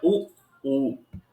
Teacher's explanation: सर्वाधिक सक्रिय अंग ओष्ठ होने के कारण ऊ और ऊ का उच्चारण स्थान ओष्ठ होता है